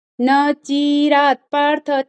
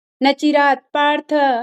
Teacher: ची आपका दीर्घ हो रहा है वो ह्रस्व है ह्रस्व मतलब छोटी मात्रा है उसमें बस यही मिस्टेक थी आपकी